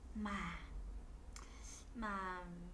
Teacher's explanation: Dấu huyền thì giọng hơi trầm xuống và kéo dài.